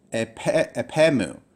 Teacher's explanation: There are two words, but with the dropping out of the omicron, it really reads very smoothly as epemu, rather than separate words up here, apa and mu. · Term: elision